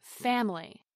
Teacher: Now let's look at the word family, with its three vowels of A, I, and Y. The stress is on the first syllable, fam.